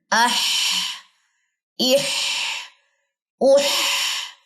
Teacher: یہ نکلنے کی جگہ کیا ہے، وسط حلق، اور اس کے اندر ہمس کی صفت ہوگی اور وسط حلق کے اوپر اس کا کمزور اعتماد ہونے کی وجہ سے اور ووکل کارڈ کھلنے کی وجہ سے آپ کی سانس جاری ہوگی